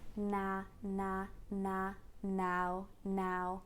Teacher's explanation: now is a very open frontal sound that begins basically like almost like the cat vowel so the tongue is quite high and frontal the mouth is